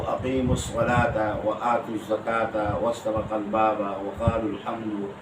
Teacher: अब दो साकिन जमा हो गए और कल में दो हैं और पहला साकिन हर्फ मद्दा है। अक़ीमू में वो जब वसल करेंगे तो हर्फ मद्दा को हज़फ कर देंगे।